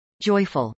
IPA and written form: ˈdʒɔɪfəl (joyful)